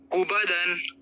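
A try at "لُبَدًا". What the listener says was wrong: دیکھو لام ہے، وہ کاف نہیں ہے. اگر کاف ہوتا یہ ہوتا بنا ہوا. آپ یہ دیکھو اوپر، یہ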